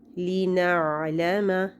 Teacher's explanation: حمزہ ساکن پہ جھٹکا ہوتا ہے لیکن عین ساکن پہ جھٹکا نہیں ہوتا